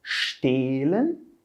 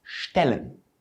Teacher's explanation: De novo, a gente tem duas versões do nosso E. Uma delas mais longa e mais fechada, mais grave, E, e a outra mais curtinha e mais aberta, E. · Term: vogal longa